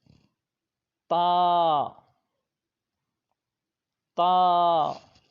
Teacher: اگلا حرف ہے تا، تا ان کو حروف نطعیہ کہا جاتا ہے، یعنی یہ زبان کی نوک اور اوپر کے دانتوں کی جڑ سے ادا ہوتا ہے